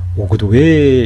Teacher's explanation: 종성 위치가 아니고요, 초성이에요. 감마가 델타와 초성 위치에서 한 덩어리로 읽히면서 이 오의 초성 역할을 하는 거예요. 그래서 오그도에 이렇게 읽어야 되는 거예요.